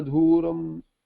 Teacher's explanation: I may have pronounced it with mahaprana as dhuram.